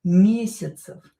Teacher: So when ye is not stressed, it's pronounced as e.